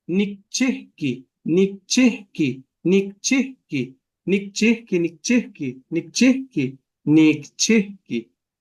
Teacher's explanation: with Nikchihki, there's a pause that should not be there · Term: una pausa